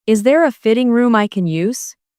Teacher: The stress here is on fitting and use.